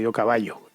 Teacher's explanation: en españa al final lo que hemos hecho como ha sucedido en otras muchas partes es pronunciar todo como la ll